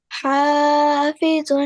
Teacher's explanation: ha comes from the middle of the throat